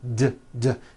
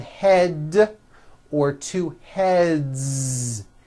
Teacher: Now the word head ends with a voiced D, d, d.